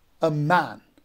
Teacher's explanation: a would be unstressed and man would be stressed. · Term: iambic